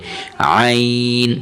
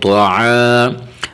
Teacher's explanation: یہاں حرف طا کو موٹا کریں گے اور عین کی آواز نکالیں گے. عین کی آواز گلے سے تھوڑا سا دبا کے